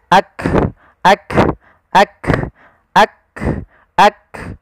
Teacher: ketika melafalkan huruf kaf, yang perlu kita bunyikan dulu yang syiddahnya, yaitu kita tahan suaranya, baru kita alirkan nafasnya. Ak, ak, ak, ak, ak.